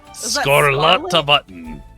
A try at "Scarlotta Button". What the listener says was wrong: I said without the accent.